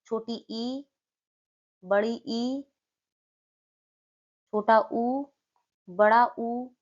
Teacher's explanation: संवृत स्वर वे स्वर हैं जिनके उच्चारण में मुख बहुत कम खुलता है। इनमें जीभ मुख में जितना संभव हो सके उतना ऊपर और तालु के करीब होती है। जिससे हवा का प्रवाह बहुत कम या मुश्किल से होता है।